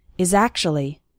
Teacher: the words is and actually kind of blend together, and I illustrated the pronunciation of the word actually.